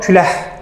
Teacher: Əgər ondan sonra samit gəlsə, və yaxud da boş tələffüz eləsəm, yəni heç nə gəlməsə, o zaman k x-ştrixə çevrilir. Yəni ix səsinə çevrilir.